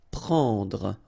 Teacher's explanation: It's what we call nasal, so it goes in your nose and it's en.